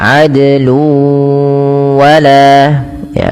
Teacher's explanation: Kemudian balafal luwa ini sama ketika bertemu sebagaimana syai'an wa, yaitu tanwinnya masuk ke huruf waw karena di sini ada bacaan idgham bi gunnah. Jadi tanwinnya wajib dimasukkan ke huruf waw, seakan-akan nanti wawnya ada huruf tasydidnya. Maka adlu wala ya, sambil ditahan dua harakat. · tanwinnya masuk ke huruf wau karena di sini ada bacaan idgham bighunah